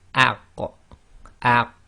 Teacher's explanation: Okay, so putting an example here, so we've got again the hamza on the alif with fatha giving a, and then we've got the qaf, and we've drawn it in light blue because when you have a sukoon on it, it's going to have this attribute of an echo.